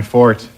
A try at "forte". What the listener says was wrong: It's just that it's not fort. It's pronounced forte.